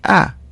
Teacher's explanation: Now place your finger under your nose. You will notice that air does not come out of your nose when you say a. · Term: non-nasal vowel